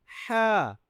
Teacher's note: ह जो है यह हरूफ हल्की जो कि आपके गले से आवाज निकलती है। ह आपके गले के ऊपर वाले हिस्से से आवाज निकले